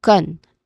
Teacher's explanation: The first syllable, con, it is pronounced softly, almost like kun. Okay? This has a relaxed vowel sound, which is our schwa sound here.